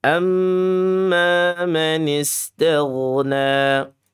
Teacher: Isti'la dia terangkat lidahnya memenuhi rongga-rongga al-jauf. Jadi mulutnya terasa penuh.